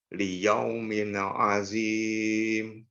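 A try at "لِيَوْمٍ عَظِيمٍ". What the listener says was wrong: Itbakkan lagi. Ada dha di sini. Liyaumin azim. Zim. Dibuat itbak dah. Zim. Agak digumpalkan sedikit suaranya di mulut kita, di lisan kita. Mungkin boleh lihat bagaimana bibir ana. Liyaumin azim, liyaumin azim, azim, zim.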